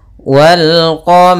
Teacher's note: rnya tebal karena ro berharakat fathah